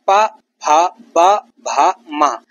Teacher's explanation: यानी ओष्ठ से इनका उच्चारण होता है। ओठों से इनकी ध्वनि निकलती है टकराते हुए। तो ऊंठ से इनकी ध्वनि बनती है।